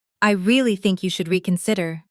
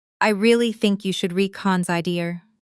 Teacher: The stress naturally falls on really, think, and reconsider, the content words that carry meaning. While smaller words like you, should, are said more quickly and softly. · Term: sentence stress